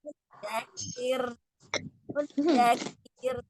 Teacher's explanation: Rohnya tipis tapi tetap mengalir. Takrirnya cukup sekali.